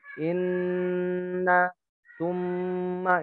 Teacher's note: Jadi mim dan nun yang bertasydid ini panjangnya itu lebih dari 2 harokat. Jadi kadarnya itu hampir 3 malah.